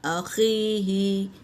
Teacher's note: ख़ा खरखरा जैसी आवाज़ निकलना है